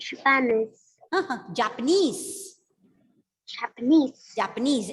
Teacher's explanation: so the stress has to be given on the last syllable